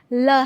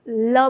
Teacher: पार्श्विक व्यंजन का उच्चारण करते समय जीभ के दोनों ही साइड से हवा निकलती है।